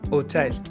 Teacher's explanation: In French, H typically does nothing. No sound ever. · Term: H muet